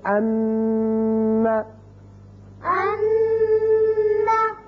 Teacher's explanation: جب ان کے اوپر شد آ جائے تو وہاں آواز رکے گی ایک الف کے برابر، جیسے ان. یہ جو تھوڑی دیر کے لیے آواز ناک میں رکی ہے یہی غنہ ہے